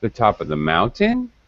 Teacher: It sounded like you're asking a question. You're using final rising intonation, pattern instead of falling.